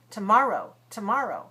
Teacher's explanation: The first syllable of tomorrow and today should be the same, very light.